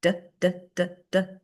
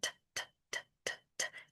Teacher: It's the same exact action. You're doing the same thing with your mouth, and then you use the voice or you take the voice away. And then I would try to emphasize the tapping of the consonant sounds.